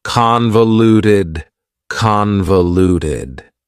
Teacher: Convoluted also has 4 syllables, and the stress is on the first syllable, convoluted. That second syllable again has that schwa sound, that reduced vowel sound. Convoluted, convoluted.